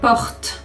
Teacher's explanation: so the t, you have the tongue in front, and the r, your tongue is behind. So your tongue has to learn how to switch between both.